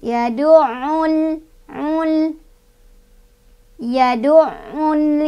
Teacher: Nah, di sini ada alif lam, namanya alif lam komariah, karena ada alif lam bertemu dengan huruf komariah yaitu ya. Cara bacanya alif lamnya jangan dipantulkan, jadi dibaca jelas